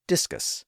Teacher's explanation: discus puts the stress on the first syllable